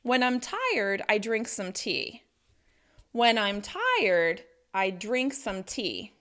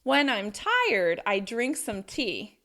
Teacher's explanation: the important words are when, tired, drink, tea. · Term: rhythm of English